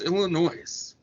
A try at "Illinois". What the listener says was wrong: Well, there's no noise in Illinois, so it's just Illinois. S is silent.